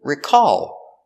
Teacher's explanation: the verb is recall with the stress on the second syllable